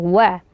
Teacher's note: huruf wau dibaca dengan memonyongkan kedua bibir